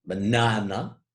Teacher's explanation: you have an unstressed syllable followed by a stressed followed by an unstressed syllable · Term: amphibraic foot